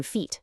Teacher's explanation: Say e like in feet. Feel how your tongue is way up high and in the front.